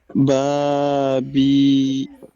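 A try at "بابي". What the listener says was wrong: Très bien.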